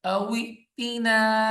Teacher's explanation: تھوڑا سا جھٹکا دے کے پڑھیں گے کیونکہ حمزہ آ گئی ہے. حمزہ ساکن جب بھی آتی تھوڑا سا ہلا کے پڑھتے ہیں ایسے.